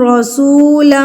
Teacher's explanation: را کے اوپر زبر ہے تو اس کو ہم یہاں پہ پھر سے پر کر کے پڑھیں گے. لم غنہ کریں گے.